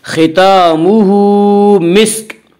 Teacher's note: उल्टा पेश कायम मकाम है वाव मद्दा के, इसलिए उल्टा पेश को 1 अलिफ के बराबर खींच कर पढ़ेंगे